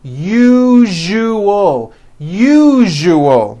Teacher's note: second syllable the one with the underline needs to be voiced put your hand on your throat and feel for the vibration in the second syllable